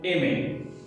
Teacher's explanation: R is in the end and there is no R sound in speaking, in pronouncing aimer